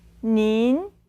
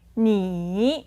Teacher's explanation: 您 So if you compare this with the normal version of you, which would be, 你 you have one third tone, you normal, 你 and a second tone for the more polite version and together with an N sound in the end.